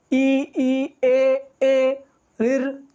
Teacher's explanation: तो जैसे अगर हम इसको पुकारे ए, तो इसमें भी हमारे जो होठ हैं वो गोलाकार स्थिति में नहीं आएंगे, या जितने भी ये स्वर हैं वो उनको बोलते हुए हमारे होठ गोलाकार स्थिति में नहीं आएंगे। चाहे आप कोई सा भी बोलकर देख लो, ई ए रिर, तो इसमें गोलाकार नहीं आते हैं। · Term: आवृतमुखी